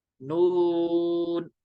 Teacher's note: वाव मद है और सुकून असली है तो मद लाजिम हो गया, तीन अलिफ खींचेंगे